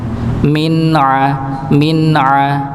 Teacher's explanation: izhar tetap ada sedikit dengungnya